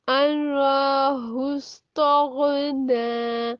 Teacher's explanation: गाइन जब साकिन हालत में अदा करें तो थोड़ा सा टाइम देना है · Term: गाइन साकिन